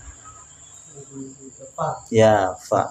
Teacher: ujung gigi seri atas menempel pada punggung bibir bagian bawah dalam